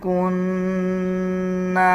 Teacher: نون کے اوپر شد ہے، غنہ کریں گے اور غننے کی آواز کو ناک سے نکالا جائے گا